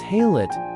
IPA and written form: ˈhaɪˌlaɪt (highlight)